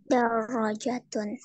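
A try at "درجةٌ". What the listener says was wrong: Darajatun. Ra-nya dipanjangin ya. Darajatun.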